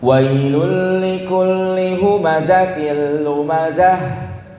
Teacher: Ya, lumazah harus ada anginnya. Tapi jangan berlebihan sampai keluar dari dada. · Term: rokhawah